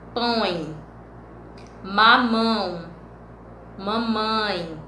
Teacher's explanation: É aquele ditongo que vai sair lá pelo nariz, certo? Ele vai funhar um pouquinho. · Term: ditongo nasal